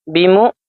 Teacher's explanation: حمزہ والے حرف کو ہم جھٹکا دے کر پڑھیں گے